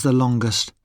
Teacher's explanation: We say the in superlatives with a weak sound, the, when the following adjective starts with a consonant. We say the ending est with a schwa sound, ust.